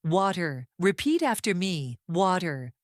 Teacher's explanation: when the T appears between 2 vowel sounds, it becomes very soft. It turns into a quick, light sound, similar to a soft D. This is called the flap T, and it is one of the biggest reasons American speech sounds smooth and fast.